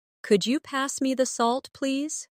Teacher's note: the way my voice rises on could you and falls gently at the end